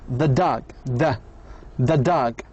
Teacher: Say the word the with almost no vowel sounds at all.